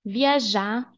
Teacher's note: We don't pronounce the R.